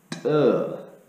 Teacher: So it'll sound like T, T. You see, there's like a buildup of pressure as your tongue is pushing against the roof of your mouth, and when it finally lets it go, that's what creates that sound. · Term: hard consonant T sound